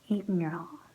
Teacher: So the G becomes completely silent, and we just say the N.